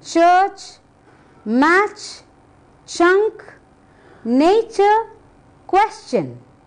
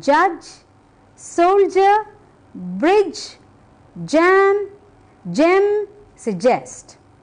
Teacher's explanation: CH is voiceless J is voiced